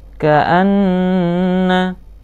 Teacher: bacaan gunnah, nunnya harus ditahan. Tandanya tasdid adalah nunnya, berarti dia maksudnya adalah double.